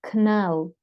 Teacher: As you can see, there is no a. It's coming after k sound, so it's inevitable that you make that sound that is a schwa.